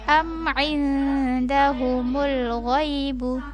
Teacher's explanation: nun sukun bertemu da dibaca samar.